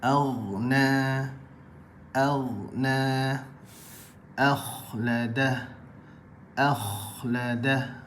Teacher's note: bahagian yang terakhir daripada bahagian kerongkong ialah bahagian hujung kerongkong keluar daripadanya huruf ghain dan huruf kha. Huruf ghain dan juga huruf kha, bahagian hujung kerongkong.